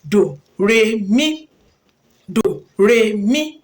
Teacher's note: àmì òkè ó là ń pè ní mí àmì àárín òun ni re àmì ìsàlẹ̀ òun ni dò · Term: àmì ohun